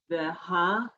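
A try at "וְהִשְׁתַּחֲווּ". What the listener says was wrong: Not, no, it's a dot. One dot E. Sh. Vehish.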